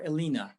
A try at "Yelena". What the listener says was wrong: Elena, you can say Elena, yeah? Usually, no, in Russia it sounds Yelena. So you should say with y, yeah? Yelena. So Yelena is the Russian name. Yelena.